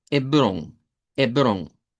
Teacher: Simplemente la E, como que la H no está, y esa O nasalizada